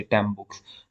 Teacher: following sound the incoming sound is b so what happens that n becomes m because of the following sound b uh which is a bilabial so m is also bilabial so